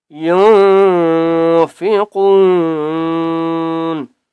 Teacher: قاف کو ہم نے موٹا کر کے پڑھنا ہے اور ایک الف کی مقدار کھینچ کر پڑھنا ہے، نون کے ساتھ ملائیں گے، ٹھیک ہے.